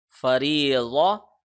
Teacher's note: ضاد کو نرم کر کے منہ کے لیفٹ سائڈ سے نکالنا ہے اور موٹا کر کے پڑھنا ہے